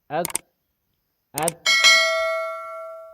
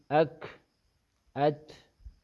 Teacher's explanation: شدت کی وجہ سے آواز بند ہو جاتی ہے اک اک, اور حمس کی وجہ سے سانس جاری ہوتا ہے لیکن سانس مسموع نہیں ہوتا.